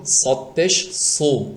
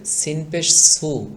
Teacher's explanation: সিন হরফটি চিকন হবে আর এই সদ হরফটি মোটা হবে